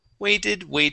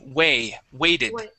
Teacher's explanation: You had said wedded using a short E sound. We wanted a long A.